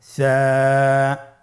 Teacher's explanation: কোন জায়গা থেকে স্ক্রিনে দেখা যাচ্ছে হারাফটির মাখরাজ হলো উচ্চারণ স্থান জিহ্বার আগা সামনের উপরের দুই দাঁতের আগার সঙ্গে লাগিয়ে উচ্চারিত হয়